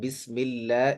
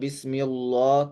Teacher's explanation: لفظ اللہ سے پہلے زیر ہے تو اس لیے لفظ اللہ کو باریک پڑھیں گے